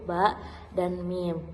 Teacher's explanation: Yang pertama yaitu bunyi bilabial, yang dihasilkan dari kedua bibir yang menutup, setelah itu lalu terbuka. Bunyi yang dihasilkannya itu bunyi huruf ba dan mim.